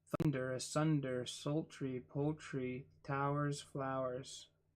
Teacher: Feminine. Stress is on the second from last syllable of each word.